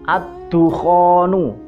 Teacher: Jadi seperti alnya itu seperti tidak ada. Tulisannya ada tapi bacaannya tidak ada. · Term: idgham syamsiah